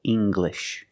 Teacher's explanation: So you have the nasal sound and the hard G